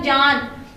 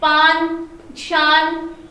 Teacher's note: जब आप जान बोलेंगे तो आपकी जबान जो ऊपर वाले दांतों के पिछले हिस्से को टच करेगी। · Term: नून